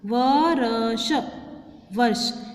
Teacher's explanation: इसमें जो र की साउंड है पहले आती है, फिर अगला जो व्यंजन होता है या स्वर होता है वो आता है